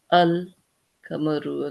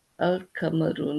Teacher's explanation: Now here you'll notice that the lamb or the L is not silent. Okay, we actually pronounce it. So it's L. Okay, so here the A does not join with the directly is not okay. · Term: moon letters